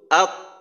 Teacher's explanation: পরবর্তীতে যেহেতু এখানে কলকলা আছে, কলকলার কারণে প্রথমে আওয়াজটা বন্ধ হয়